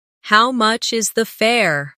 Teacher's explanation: The stress is on how much and fair.